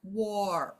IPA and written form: wôr (WAR)